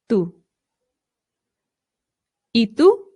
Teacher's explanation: you can make the softer T by bringing your tongue right up behind your teeth instead of through your teeth